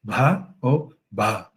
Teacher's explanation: Tem o B, a vogal começa murmurada e termina com a voz modal. Mas aí no Gujarati, o que acontece? A vogal inteira fica murmurada.